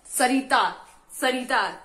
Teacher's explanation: जब भी हम स शब्द बोलते हैं, सरिता, सरिता, तो हमारी जीभ कहाँ लगती है, दांतों के आगे लगती है, ठीक है, दांतों में लगती है। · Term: दंत्य